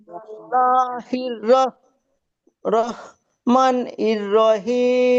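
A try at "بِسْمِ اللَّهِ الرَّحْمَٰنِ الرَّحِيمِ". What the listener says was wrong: মানির রয় নয়, এখানে টানবে। বিসমিল্লাহির রহমানির রহমানির রহিম।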